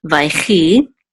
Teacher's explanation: So this shava is actually not going to be sounded. It usually isn't in the middle of the word, especially when it follows a letter with a patak.